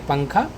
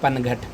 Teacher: تو یہ اخفا اور اظہار کا فرق ہے کہ اخفا میں آواز کو چھپاتے ہیں، نون کی آواز کو ناک میں، جیسے پنکھا، اور اظہار میں نون کی آواز کو ظاہر کرتے ہیں، جیسے پنگھٹ۔